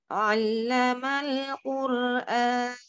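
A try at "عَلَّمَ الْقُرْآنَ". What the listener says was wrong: Oh, maknya jangan besar. Allamal Qur'an.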